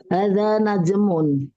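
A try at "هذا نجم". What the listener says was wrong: Iya, bagus. Ahsantuma.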